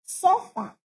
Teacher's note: sofá é uma oxítona, ou seja, a última sílaba é forte.